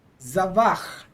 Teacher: we have a long vowel, the kamats, underneath the zayin. And in this case, the long vowel is not accented. So in this case, we'd accent this word normally, which is the end of the word.